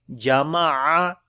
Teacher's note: عین کو گلے کے درمیان والے حصے سے پڑھیں گے